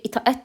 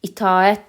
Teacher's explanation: Çünki itaət demirik, itaət deyirik. A səsi uzanmalıdır.